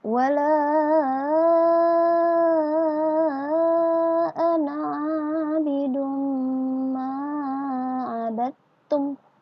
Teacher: Tanwin damatain bertemu dengan mim dibaca berdengung.